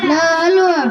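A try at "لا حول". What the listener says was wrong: দাদুজান, লা হালওয়া নয়, লা হাওলা।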